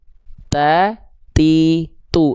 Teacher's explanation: Ta harus ada percikan nafasnya.